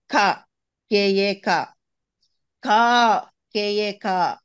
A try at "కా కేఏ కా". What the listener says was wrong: ఆ రెండోది కూడా ఆగమ్మా, ఆడ ఎందుకు బ్రేక్ ఇస్తున్నావు? రెండోది లాగమ్మా, టైం లేదు నాకు.